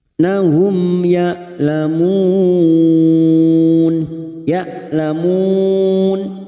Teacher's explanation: mim sukun bertemu ya Idhar syafawi mim sukun dibaca jelas tanpa mendengung